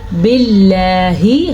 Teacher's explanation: باللہ ہم نے اللہ کے لفظ اللہ کو باریکی سے ادا کیا